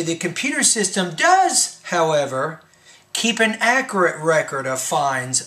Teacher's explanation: when you get to the word does i think you want to raise your pitch a little bit